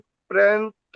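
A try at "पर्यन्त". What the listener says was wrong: पर्यंत नहीं है। पै के नीचे रह आता है तब पर्यंत होता है, ये पर्यंत है।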